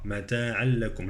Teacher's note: التنوين يدغم في اللام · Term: إدغام